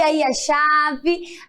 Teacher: A chave termina com E, porém tem o som de I